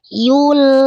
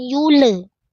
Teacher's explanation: Lam sukunnya terang jelas. Sisi ujung lidah sentuhkan ke gusi atas. Yul. Bukan yule. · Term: lam sukunya